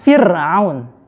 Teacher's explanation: Ro-nya dibaca tipis juga ketika berharokat sukun dan jatuh setelah kasrah.